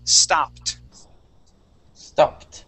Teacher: when we have a word that ends with P, okay, that ED sounds like a T